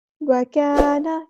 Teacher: کاف باریک ادا کرنا، الف مد آ گیا تو مد اصلی کریں گے. وکانا، نون کے زبر کو لمبا نہیں کریں گے.